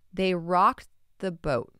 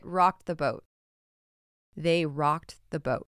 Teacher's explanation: you barely hear that t in there because it meshes in